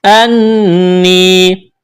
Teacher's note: نون مشدد ہے، غنہ کریں گے، آواز ناک میں چھپائیں گے. یا ساکن سے پہلے زیر ہے، یا مدہ ہے، ایک الف کے برابر کھینچنا ہے.